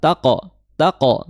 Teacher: di situ qaf qalqalah taqo ya, disertai dengan suara tebal karena dia isti'la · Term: qof qalqalah